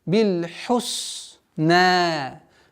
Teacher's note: Аннулируется удлинительная буква, остается удлинительный звук в размере 2 огласовок.